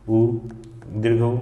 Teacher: ओंठ जो है गोल हो जाता है, वृत्त के समान गोल हो जाता है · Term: वृत्ताकार